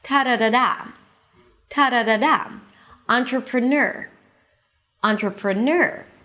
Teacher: There is a secondary stress at the beginning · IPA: ˌɑːntrəprəˈnɜːr